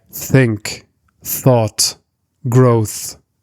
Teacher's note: we have an unvoiced TH sound in words like think, thought, growth.